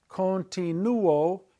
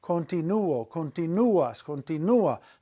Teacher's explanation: You hear the u-o as two separate sounds, not gliding together to make one.